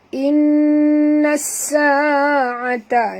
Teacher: nun bertasydid, wajib dengung, wajib al-gunah